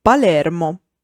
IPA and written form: paˈlɛrmo (Palermo)